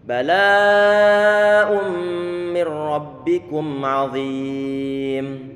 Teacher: Nun sukun dimasukkan ataupun ditughamkan pada huruf ra sehingga menjadi satu huruf yang bertasydid. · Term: idgham bila gunnah